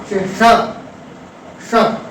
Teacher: श, श, तो आप देख रहे हैं कि मुख के अंदर ही जैसे ही तलवे के पास हमारी जिह्वा जाती है वैसे ही श का उच्चारण स्पष्ट आपके सामने उपस्थित हो जाता है। तो इस तरह से जितने भी वर्ण हैं ये ताल के माध्यम से उच्चरित होते हैं।